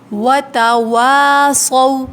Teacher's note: صو ہونٹوں کو راؤنڈ کریں گے